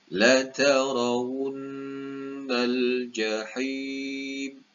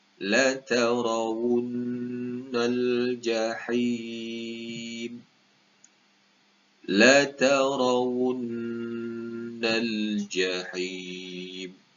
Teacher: nun yang bertanda sabdu wajibul gunnah, perlu dibaca dengung 2 harakat, dan di akhir ha huruf terdapat huruf mad di sini, ya mad mad alif sukun di ujung di akhir ayat, jadi perlu dibaca dengan panjang.